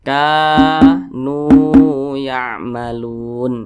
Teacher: Nah, ini tanda baca baris dhammah dan posisinya tepat berada di belakang huruf wa sukun, maka dia dibaca panjang. Mat tabi'i panjangnya 2 harakat atau kira-kira 2 ketukan.